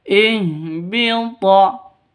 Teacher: Ha ini keluarnya dari tenggorokan paling bawah. Ihbita. Toknya hurufnya qalqalah.